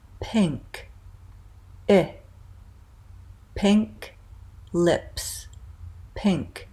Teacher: we're going to keep our tongue high in front but we're gonna relax it so not quite so tight